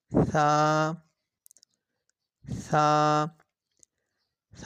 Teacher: زبان کی نوک جب اوپر کے اگلے دونوں دانتوں کی نوک کی طرف والے آدھے حصہ سے لگے۔